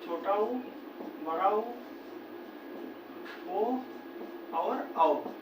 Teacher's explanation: ये चार स्वर ऐसे है जिनको बोलते समय हमारा ओठ जो है एकदम से गोल हो जाता है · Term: वृत्त स्वर